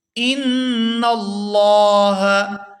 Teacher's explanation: نون مشدد پر غنہ کریں گے، آواز نا کے اندر جائے گی اور کچھ دیر اس کو نا کے اندر روکیں گے